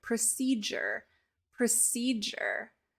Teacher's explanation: the D and the U make a j sound